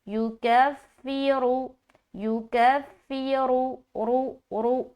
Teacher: یکفرو، یکفرو، رو رو ایسا، وَیُکَفِّرُ، اور یہاں پر کہیں پر بھی کھینچنا نہیں ہے، بس اس میں خاص یہ خیال رکھے کہ را موٹا ادا ہو